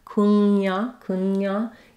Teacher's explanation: You're gliding from the NG into the Y sound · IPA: /kuŋjɑˈmɑn/